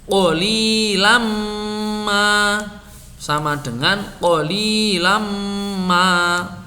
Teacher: Nun tidak bertanda atau tanwin deret bertemu mim dibaca mim tasydid.